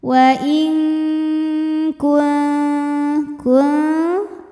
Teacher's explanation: wa in kuntum kuntum ada hukum ikhfa aqrab karena nun sukun menghadapi huruf ta. Maka nun sukun dibunyikan samar-samar siap-siap menuju ta disertai bunyi dengung.